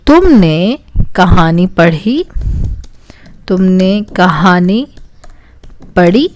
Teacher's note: This is a question because the intonation of my sentence is rising in the end.